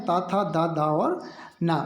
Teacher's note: तो इनका जो उच्चारण स्थान है वह है दंत